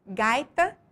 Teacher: Em gaita, a sílaba mais forte é a penúltima sílaba da palavra, gai, portanto, paroxítona.